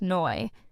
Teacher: I used to get confused by Australian English, no sounds like noi.